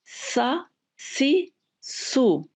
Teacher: सीन, जिसमें बाकायदा सीटी की आवाज़ नुमाया है, और इसका मखरज भी जुबान के नीचे के दो दांतों के किनारे से जब जुबान लगती है तो ये आवाज निकलती है, सीन।